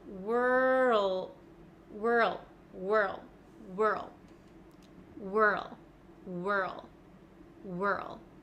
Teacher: I can feel my tongue sliding from the back to the front so from R to L · Then we go from an R to an L, which I know is difficult for a lot of you. I can feel my tongue sliding from the back to the front.